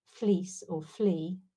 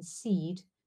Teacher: And lastly, on this slide, we've got a distinction between in the E sound, between how it sounds in fleece or flea, so before a voiceless consonant or before no consonant at all, where it's quite close and high but not particularly long, whereas in seed it's more like it's a little less high, a little more like I, but it has greater length, so we transcribe it differently.